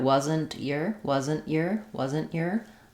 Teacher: I'll use an unreleased t because the Y of year is a consonant sound